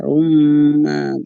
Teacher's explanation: Jadi tanwinnya melebur ke huruf ma ya. Ma-nya itu jadi ya. · Sambil gunnah ya. Gunnah dengung ya. Masuk ke hidung ya. Gunnah dibaca 3 harokat, 2,5 sampai 3 ya.